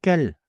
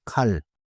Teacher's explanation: If the start is tight with almost no air, you are hearing 깰, not 칼. 정리해 볼게요. 첫째, 모음은 같고 첫 소리만 달라요.